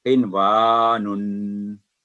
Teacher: यहाँ भी नून साकिन के बाद वाव है तो इसे इजहार के साथ पढ़ा जाएगा